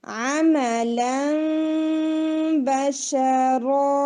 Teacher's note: ला में बिल्कुल nasal sound ना जाए